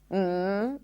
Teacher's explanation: As you close the lips and the air comes out through the nose, m if you wrap your nose, you'll feel the vibrations.